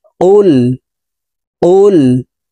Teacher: কফ লাম পেশ কুল। কফকে জিহ্বার গোড়া তার বরাবর উপরের তালুর সঙ্গে লাগাইয়া উচ্চারণ করতে হবে। তারপরে দেখুন, এই কফ জজমওয়ালা লামকে একবার ধরে উচ্চারণ করতে হবে।